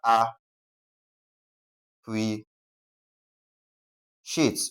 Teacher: because appreciate carries a sh sound, that is the C I A, we're going to place the stress on the second syllable before the last. Okay, that is the second to the last syllable.